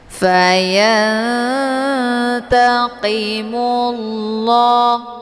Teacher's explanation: Hukum bacaan ikhfa aqrab dibacanya sambil didengungkan.